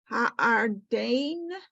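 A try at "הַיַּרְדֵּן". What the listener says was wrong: A yard, don't forget the yud, a yard.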